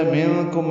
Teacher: منکم میں اخفا ہے، نون ساکن کے بعد کاف آنے کی وجہ سے